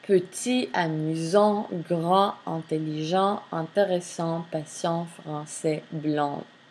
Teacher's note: les consonnes finales in French language are mute in singular